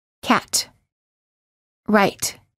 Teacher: do not release the T. Just let your tongue stay on top, touching the gum ridge with no air coming out when you're saying the T. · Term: held T